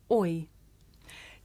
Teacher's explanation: this is a diphthong a double vowel sound the shape the mouth makes changes from the beginning of the word to the end